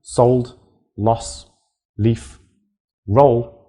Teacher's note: in words like sold loss leaf roll the air never stops completely